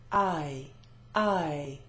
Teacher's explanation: I is a diphthong. You've got two vowel sounds stuck together, and there's always movement of the jaw. I, going from open to closed.